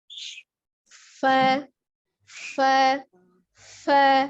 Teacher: ada aliran udara yang mengalir ketika mengucapkan huruf fa. Jadi tidak boleh jelas fa tanpa udara ya. Jadi harus ada aliran nafas yang mengalir. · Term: al-hams